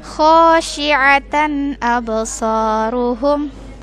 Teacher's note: Perhatikan, ini huruf kho dan shi, kemudian ada huruf a. Huruf a ya, di tengah tenggorokan